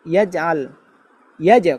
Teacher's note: এরপর এখানের মধ্যে যেটা আমাদের ভুল হবে, ভুল হয় যেটা, আলাম ইয়াজআল, ইয়াজআল, ইয়াজ কলকলা করতে হবে, ইয়াজআল আইন চাপ দিতে হবে